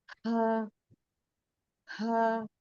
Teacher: हा को भी खींचेंगे 2 अलिफ के बराबर, हा, 2 हरकत के बराबर।